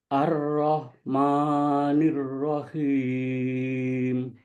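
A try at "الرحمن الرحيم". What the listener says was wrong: Huruf H yang sukun dari tenggorokan. Ar-Rah. Biar dulu keluar desisnya. Ar-Rah. Jangan keburu dipotong ma. Biar keluar dulu. Ar-Rahmanir-Rahim.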